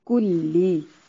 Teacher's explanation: آپ کو اتنی مرتبہ ہم بتا چکے ہیں کہ نیکسٹ اگر ہم آپ کو نہ بھی بتائیں تو آپ کو خود پتا ہونا چاہیے کہ فتحہ، کسرہ، دمہ ان کو موٹا نہیں کرنا، لمبا بھی نہیں کرنا اور انہیں جھٹکا بھی نہیں دینا۔ کلی، کاف کو باریک اور لام کو بھی باریک پڑھنا ہے